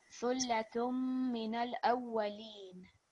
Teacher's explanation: this is an example of ya madda. So when we read it, we'll prolong for 2 seconds